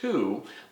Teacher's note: if I say the word to my tongue in my mouth starts touching the back of my top teeth